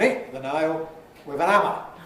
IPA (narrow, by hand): ˈɪʔ ðə ˈnʌɪl wɪð ən ˈæmə